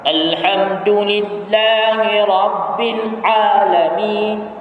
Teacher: Itu rakhawah. Tapi huruf ain itu adalah tawassul, dan dia tidak terlalu menekan pula, tidak syiddah